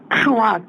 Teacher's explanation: 혀의 뒷부분이 입천장의 뒤에 말랑말랑한 부분을 막아요 그 안에 공기를 모아다 터트리는 겁니다 기본적으로 여섯 개가 있는데 셋